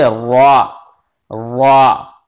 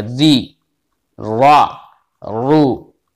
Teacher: अगर अच्छा बेटा रा पर जबर हो या पेश हो तो रा को मोटा पढ़ेंगे, यानी पुर पढ़ेंगे,